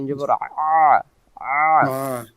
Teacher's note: হলকের মধ্য থেকে একটু চেপে পড়তে হয়